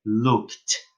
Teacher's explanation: Eu escrevo looked com ED, mas eu vou pronunciar looked. Esse meu ED vai ter som de T.